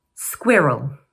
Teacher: it's made up of 2 syllables and the first one is stressed.